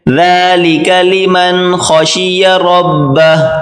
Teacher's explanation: ذال ہلکی سی زبان باہر نکالیں، یہ چھوٹی کاف اس کو باریک کریں، ذالک لمن خشی ربہ، خشی ربہ، خا کو موٹا کریں، خشیہ، اس کے بعد را کو بھی موٹا کر کے پڑھیں گے، ذالک لمن خشی ربہ۔